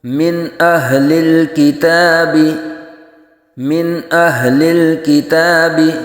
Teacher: کے اوپر، بلکہ نرمی سے نلذین کفروا من اہل الکتاب، یہاں نون ساکن کے بعد حروف حلقی میں سے حمزہ آ رہا ہے، تو یہاں بھی اظہار حلقی ہوگا، نون ساکن میں غنہ نہیں کریں گے